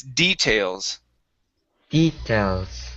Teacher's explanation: nice um next is uh the word uh details so here the stress is at the very beginning instead of details it's details details okay very nice um next